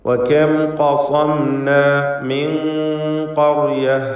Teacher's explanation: സാക്കിനത്തായ നൂനിനെ ഖാഫിന് മുമ്പിൽ വന്നതിനാൽ ഇഖ്ഫാ ഹഖീഖി നൽകി മറച്ച് മണിക്കണം. മണിക്കലിൽ തഫ്ഖീമാണ് വേണ്ടത്.